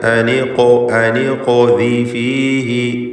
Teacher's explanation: ഖാഫിൻ്റെ സുക്കൂൻ ഖൽഖല സുഗ്റ നൽകി ഉച്ചരിക്കുക, ശബ്ദം ചലിപ്പിക്കണം. അതോടൊപ്പം ഖാഫിന് തഫ്ഖീമുമുണ്ട്.